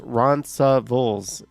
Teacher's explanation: Yes, Roncesvalles an avenue is pronounced Ronsavuls in Toronto with the emphasis on the second syllable. They put the S in there.